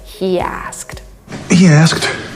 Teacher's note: we have this extra y between these two words and this is why it sounds like he asked he asked